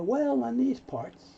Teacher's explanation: The L moves over, so you hear, well, in these parts.